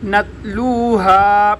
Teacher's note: تا پر قلقلہ نہیں ہوتا